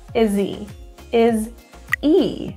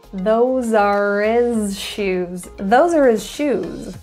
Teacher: Another very common reduction in English, especially North American English, is the deletion of the H sound in words like he, his, her